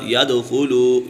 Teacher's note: اس کے بعد یدخلو، یہاں پر واو مدہ ہے اور یہ واو مدہ کو ایک الف یعنی 2 حرکات کے برابر کھینچ کر پڑھیں گے